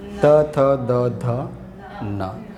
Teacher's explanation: તમારું જે જે જીભનું જે ટેરવું છે એ ક્યાં અડે? દાંતને સ્પર્શે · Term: દંત્ય